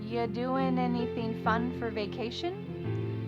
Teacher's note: we're going to start this question with just you, which is reduced to y.